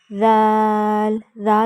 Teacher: ذال اور سا کو ایک ہی طرح پڑھیں گے، دونوں دانتوں کے زبان درمیان میں رکھ کے